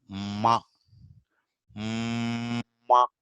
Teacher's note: ma is stopped as at a bilabial, that is with the two lips. We stop ma, ma, but air doesn't come out of your mouth. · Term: nasals